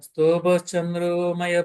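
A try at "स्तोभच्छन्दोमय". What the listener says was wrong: Prabhuji, ఇది చంద్ర కాదు, చందో.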